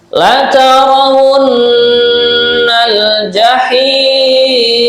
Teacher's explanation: Kemudian wun, nah ini nun bertasydid dibaca gunnah atau mendengung